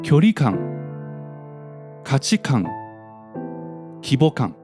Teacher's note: While the ones in the compound nouns on the right become pattern D, and they sound like 距離感、価値観、規模感. Here, the pitch drops after the last mora of the former element